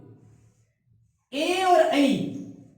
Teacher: ए और ऐ इनका उच्चारण स्थान कंठ और तालु से किया जाता है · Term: कंठ तालु